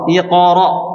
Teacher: Jadi qalqalahnya huruf tebal ya, itu seakan-akan kita membaca fathah.